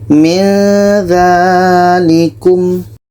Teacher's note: Ketika sebut huruf nun, kita sudah merasakan huruf za.